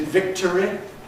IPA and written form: ˈvɪktəri (victory)